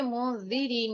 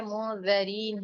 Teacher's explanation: मुंज़िरीन नहीं है, मुंज़रीन है, ज़ा के ऊपर जबर है